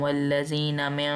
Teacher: मीम को नून तशदीद से मिलाते हुए हमने गुन्ना करनी है